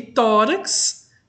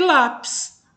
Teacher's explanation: são palavras em que a sílaba tônica é a penúltima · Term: paroxítona